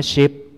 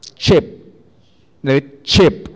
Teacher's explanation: ถ้า sh มันจะไม่มีถ้า ch มันจะมีการกักเสียงก็คือกักลมไว้ก่อนแล้วค่อยปล่อยเป็น fricative ตามมา ใช่ไหมครับอย่างที่บอกนะเราอาจจะฟังแล้วมันออกยากนิดนึงเพราะว่าภาษาเราใช้หน่วยเดียวนะครับดังนั้นต่อไปนี้สมมุติว่าเราต้องการจะสื่อสารกับ native speaker แล้วเราจะต้องการจะออกเสียง sh กับ ch ให้พยายามคิดว่าอย่างนี้ถ้าออกเสียง sh เนี่ยพยายามอย่าให้มันมีความดันถูกกักไว้ก่อนที่จะออกเสียงตัวนั้นเช่นพยายามออกเสียงนิ่มๆอย่าง sh